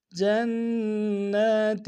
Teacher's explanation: جنہ میں نون مشدد ہے، غنہ کریں گے،